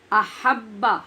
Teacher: احبا ہا ٹھیک پڑھنی ہے, با کو شدت سے پڑھنا ہے